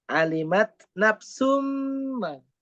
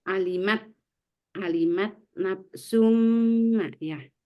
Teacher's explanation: dengan sempurna tanpa menyisakan sifat huruf pertama. Jadi sunnya itu betul-betul hilang masuk ke mim ya. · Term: idgham kamil